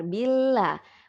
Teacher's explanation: ingat lam ini dia dari ujung lidah sampai ke sisi. Jadi lidah kita melebar. Billah, bukan bukan meruncing deh ya, bukan billah, bukan seperti itu tapi menyebar. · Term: tipis